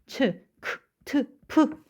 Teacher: 거센 소리는 근육을 긴장시키거나 그리고 숨을 거세게 터트리는 소리예요.